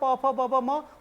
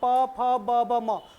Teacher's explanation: ओंठ आपस में मिल रहे हैं, प फ ब ब म, तो ये हो गया आपका ओष्ठ्य।